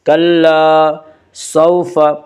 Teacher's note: واولین کو نرم آواز کے ساتھ جلدی پڑھیں گے